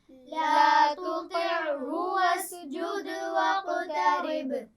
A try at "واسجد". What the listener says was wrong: ایک تو سین پر قلقلہ نہیں ہوگا وسجد نہیں پڑھیں گے وسجد دال پہ قلقلہ ہوگا دیکھیں حروف قلقلہ کتنے ہیں 5 کون کون سے